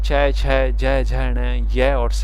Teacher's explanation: इनके उच्चारण में जिह्वा का अगला भाग ऊपर उठकर दांतों के मसूंडों के ऊपरी चिकने भाग तालु का स्पर्श करती है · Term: तालव्य